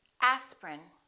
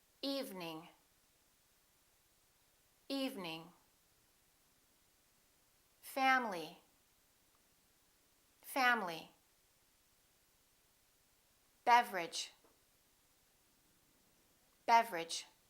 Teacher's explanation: Each one of these words contains one vowel, one syllable, which is not pronounced.